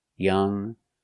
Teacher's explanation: Young is in your nose. Young with no g. Young. But if I compare and I put er, younger, I use the g sound.